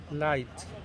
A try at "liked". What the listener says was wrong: No, that's more like light shining down. So do you have to do the k sound?